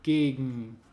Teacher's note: Also wird zum Beispiel G zu N im Wort gegen